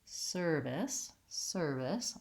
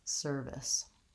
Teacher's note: I want length on the sir, and short and light on the this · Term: first syllable stress